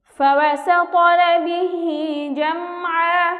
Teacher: জিম মিম জবর জাম, আইন 2 জবর আন, মিম সাকিনের বামা আইন অর্থাৎ মিম সাকিনে ইজহার, আমরা এখানে গুন্নাহ ছাড়া পড়ব।